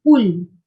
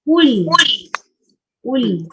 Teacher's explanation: kita baca ku muncung mulut, lam jangan muncung. Banyak kesilapan yang berlaku, muncung sekali dua-dua.